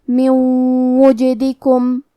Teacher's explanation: کلمت من کے آخری میں نون ساکن ہے، پھر حرف الواو ہے کلمت وجدکم. واو حروف الادغام بغنہ میں سے ہے، تو ہم یہ حکم کو غنہ اور تشدید کے ساتھ ادا کریں گے. کیونکہ واو پہ تشدید پیش کا ہے تو ہمیں پیش کو ظاہر کرنا ہے.